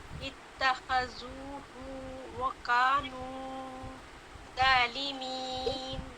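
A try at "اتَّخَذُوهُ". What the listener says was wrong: اچھا ہو کو زیادہ لمبا نہ کریں، اتخذوہ وکانوا ظالمین.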